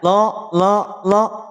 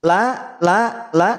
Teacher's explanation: pada saat pengucapan huruf lam pangkal lidah kita tidak perlu naik p l t n tipis la la la tidak lo lo